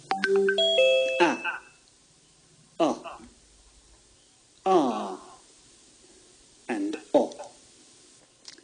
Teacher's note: to make these sounds our mouth should be almost wide open and it feels like the sound is coming from the bottom of the mouth and that's why they're on the bottom row the columns are